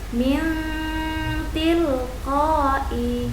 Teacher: Harus dibaca berdengung dengan mendekati bunyi n, lalu suara ditahan 2 ketukan. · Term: bacaan ikhfa